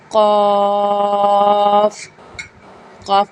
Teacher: قاف، قاف کو موٹا پڑھا جائے گا، یعنی کہ منہ بھر کے پڑھا جائے گا، زبان کی جڑ اور تالو کے نرم حصے سے قاف ادا ہوگا